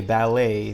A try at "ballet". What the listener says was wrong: No, so we don't pronounce the T. It's just ballet, ballet.